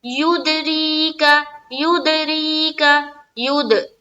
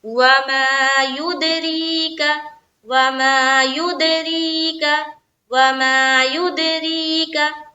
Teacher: युद दाल में कलकला, री में या मद्दा करते हुए रा को बारीक रखनी है, काफ जबर का